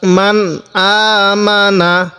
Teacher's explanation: এই নুন সাকিনের পরে হামজাটি হলো ইজহারের হরফ, তাহলে আমরা এই নুন সাকিনের মধ্যে স্পষ্ট করে পড়ব। মান হামজা খারা জবর আ, মিম জবর মা নুন জবর না, আমানা, মান আমানা।